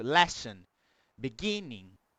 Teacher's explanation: a ênfase da palavra está no começo. Sempre no começo.